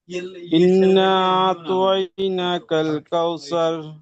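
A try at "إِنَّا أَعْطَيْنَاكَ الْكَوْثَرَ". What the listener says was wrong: ওখানে নুন তাসদীদ গুণনা হবে। সেখানে মদ আছে। মদ হ্যাঁ, নুনে তাসদীদ গুণনা হবে। ফের এক আলিফ টান হবে। এখানে মদ আছে, পূর্বে মাদ্দা রয়েছে, তারপরে হামজা দ্বিতীয় শব্দের প্রথমে এসছে, সেই জন্য মধ্যে মুনফাসিল হবে।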